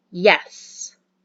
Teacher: we're gonna say yes with confidence so it's going to be yes that's a falling intonation